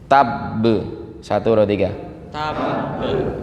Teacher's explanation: Oke, jadi agak ditahan Bapak Ibu. Yang memantul tapi ditahan duluan. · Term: qalqalah akbar